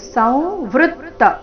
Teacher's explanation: ಅನುಸ್ವಾರದ ಉಚ್ಚಾರಣೆ ಈ ಶಬ್ದದಲ್ಲಿ ನಾಸಿಕ ವ ರೀತಿ ಸಂವೃತ್ತ ವೃ ಮೇಲೆ ನೈಸರ್ಗಿಕ ಆಘಾತ ವಿಸರ್ಗದ ಉಚ್ಚಾರಣೆ ಅರ್ಧ ಸ ರೀತಿ ಸಂವೃತ್ತ